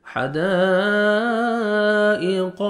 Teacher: قاف کو موٹا کر کے پڑھیں گے